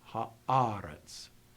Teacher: the accent is not in final position. It's earlier in the word.